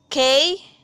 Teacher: ang ibabaw ng punong dila ay dumidiin ng ngala-ngala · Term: velar